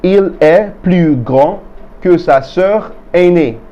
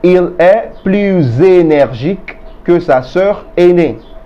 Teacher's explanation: However, if the adjective or the adverb begins with a vowel, there is going to be a liaison between the S of the plus and the beginning sound of the adjective or the adverb, resulting in a Z sound in between them